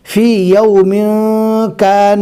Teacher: 2 پیش کو ناک میں چھپا کر پڑھیں گے۔ جیسے یہاں پر فی یوم کان، ہم نے کل جو گرامر پڑھا تھا اس کے اندر ہم نے یہ پڑھا تھا کہ ظاہر کر کے پڑھیں گے، اب اس میں ظاہر کر کے پڑھا جاتا تھا، لیکن آج کے اس گرامر میں چھپا کر پڑھیں گے ناک میں۔ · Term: اقفا